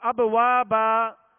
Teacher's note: دو زبر کی تنوین کو الف سے بدل کر ہم نے وقف کیا